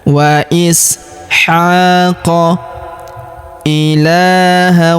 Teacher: Huruf ha kita panjangkan 2 harokat karena terdapat alif kecil di atasnya.